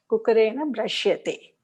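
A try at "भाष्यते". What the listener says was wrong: Bashyate, not Brashyate. It is Bash. Bashyate.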